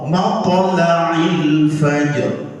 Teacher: yang benar di dalam qiraat Imam Asim adalah lam tarqiq, bukan lam taghliz.